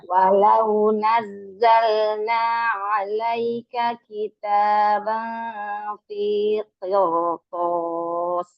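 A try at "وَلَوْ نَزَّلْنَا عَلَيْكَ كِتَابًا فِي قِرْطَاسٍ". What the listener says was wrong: Tapi q-nya biasa aja. Ro-nya aja yang tebal. Q-nya tebal, tapi karena dia apa ya? Qaf itu walaupun dia huruf istilah, tapi dia invitah. Jadi ketika kasroh dia nggak setebal-tebal itu amat gitu.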